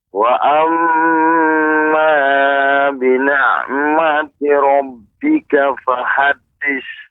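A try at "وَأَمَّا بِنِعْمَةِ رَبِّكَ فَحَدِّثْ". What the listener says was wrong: Ya, tadi pengucapan wa amma Bapak. Jangan terlalu panjang, 2 harokat. Caranya dengan diayun. Wa amma bini'mati rabb.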